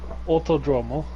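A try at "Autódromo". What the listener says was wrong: Jesus, you say you you don't really pronounce the D. You say like th, like you have a lisp. Autodromo.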